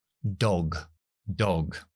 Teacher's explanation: d es d muy parecido a Castellano oclusiva es decir explosión Sonora con voz alveolar lengua detrás de los dientes justo arriba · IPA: /dɒg/